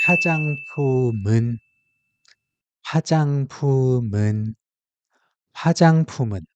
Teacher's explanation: As you know, "ing" in "un" is silent. So the final consonant from the previous word naturally moves over and fills the silent spot